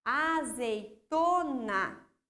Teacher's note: Olha só, o to é a minha sílaba mais forte. Então, ali é a minha sílaba tônica.